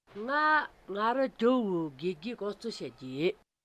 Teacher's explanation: In the first example, gege has a low rising pattern.